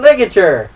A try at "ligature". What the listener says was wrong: Just remember that funny word ligature. Yeah, not rigature, it's ligature.